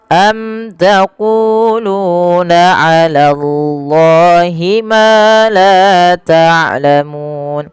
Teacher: sama panjang antara ku dengan lu karena ia mad tabi'i